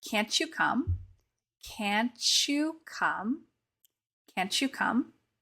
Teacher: the T and the Y will get combined to create that CH sound and you'll hear people say can't you come can't you come